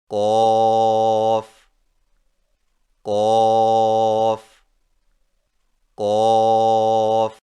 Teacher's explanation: قوف کی ادائیگی میں زبان کی جڑ کو کوے کے متصل تالو پر لگا کر موٹی آواز میں پڑھیں، یعنی قوف قوف قوف۔